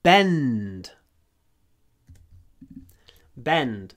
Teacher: when we have nd in English, we hold the n. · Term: Long n before a d